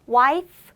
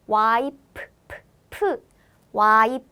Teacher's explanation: in korean we don't have f sound so we replace the f pronunciation with p sound so instead of wife we say y p y so for